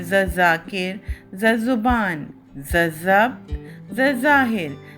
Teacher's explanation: زال، زے، زواد اور زوئیں جب حروف تہجی کے ساتھ جڑتے ہیں تو ان کی آواز زے کی آواز میں تبدیل ہو جاتی ہے، یعنی ان چاروں حروف کو ہم زے کی آواز نکالیں گے، ز کی آواز نکالیں گے۔ روزمرہ گفتگو اور اردو تلفظ میں ان چاروں کی آواز ایک جیسی یعنی زے کی آواز بن جاتی ہے۔